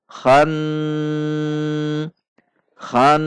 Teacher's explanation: Nun tasydid dibaca gunnah dengung 2 ketuk.